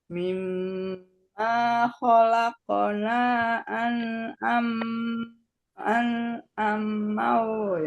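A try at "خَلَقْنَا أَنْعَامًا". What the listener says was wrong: nanya juga 2 ayunan Bu. nanya tadi kurang 2 ayunan Bu. Kholaqona harus lebih panjang dari mimma.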